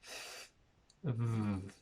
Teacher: Labiodental, between your upper teeth and bottom lip.